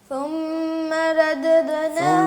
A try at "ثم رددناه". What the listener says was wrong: ثم ردد را کو موٹا پڑھیں آپ. آپ کی سین میں بھی خرابی ہے، سین کو ٹھیک کریں بیٹا.